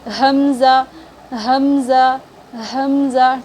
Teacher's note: حمزہ بھی حلق کے نیچے والے حصے سے ادا ہوگی